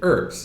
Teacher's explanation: but the H is silent